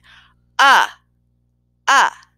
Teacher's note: for the uh I over exaggerated and open my mouth wide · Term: short u sound